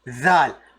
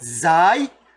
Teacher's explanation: While making this zal sound, your tongue will be a little bit out. Zal. But zai, you will have your tongue inside.